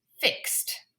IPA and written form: fɪkst (Fixed)